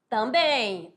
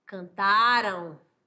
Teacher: O an e o em final de palavra, representando ditongos nasais.